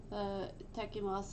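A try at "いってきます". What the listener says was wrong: Itakimasu. Itakimasu. Itakimasu. There's a small tsu there. Small tsu tekimasu.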